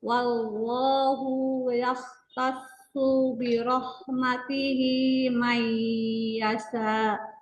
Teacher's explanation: Huruf shad nggak panjang, sempurnakan tasydid pada shad biar nggak terbaca panjang.